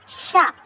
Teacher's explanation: इसमें तो सीटी और घसट करके हवा निकल रही है